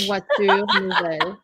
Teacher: there's no liaison because they're all consonants